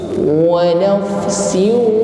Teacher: Ketika berdengung ini bibir kita sudah dihimpun ke depan karena sudah masuk pada makhraj huruf waw. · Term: bunyi dengung